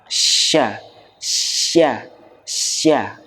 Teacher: huruf shin menggunakan tengah lidah. Dan dia punya sifat khusus namanya at-tafashi, angin itu menyebar. Ya, menyebar di mulut itu anginnya menyebar.